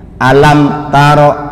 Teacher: sebab mim itu makhrajnya syafatain dua bibir berarti adalah jelas di bibir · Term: izhar syafawi